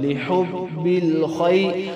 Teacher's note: آگے لام زیر لی، حا با پیش حب، لحب، با لام زیر بل، لحب، خوا یا زبر خی، لحب الخی، خوا موٹا حرف ہے، موٹا کریں گے، آگے یا لین ہے اور اس کو ایک الف مقدار سے کم لمبا کریں